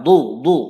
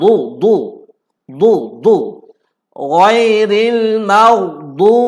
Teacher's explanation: Okey, huruf dad tidak ditebalkan. Sepatutnya ditebal.